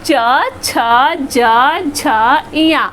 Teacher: जब हम इसको बोल रहे हैं तो हमें तालु का प्रयोग करना हो रहा है। हमारी जीभ जो है वो तालु को छू रही है। बच्चों, दांत अंदर वाला दांत, बाहर वाला दांत नहीं, अंदर वाला दांत के जस्ट पीछे के भाग को हम तालु कहते हैं। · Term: च वर्ग